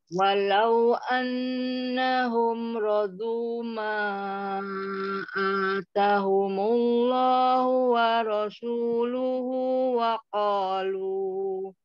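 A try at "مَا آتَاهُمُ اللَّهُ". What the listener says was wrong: Taknya dua harokat ya Om. Tahumu.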